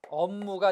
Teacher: 앞에 비읍이 미음, 즉 비음이 되죠. 업무가 됩니다. 모두 뒤에 것 때문에 앞에 게 바뀌는 역행 비음화가 되겠습니다.